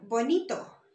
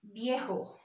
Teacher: B and V is pronounced the same. So in the Spanish language, we don't have the V sound. It's going to be pronounced the same with the letter B.